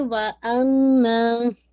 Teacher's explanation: غنہ کی جو رینکنگ ہے وہ موسٹ کمپلیٹ غنہ اکمل غنہ ہے. تو آپ نے اس کو 2 کاؤنٹ ہولڈ کرنا ہے. جس آپ کا ساؤنڈ آپ کی نیزل کیوٹی میں جائے گا